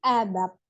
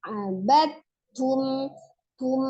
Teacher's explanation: Jadi, tapi tidak disertai dengan gunnahnya, tidak ditahan abad tum, ya, seperti, tapi langsung tasdid saja abad tum ya. Jadi langsung huruf ta yang dibaca, huruf dalnya kita lewati, dianggap tidak ada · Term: idgham mutajanisain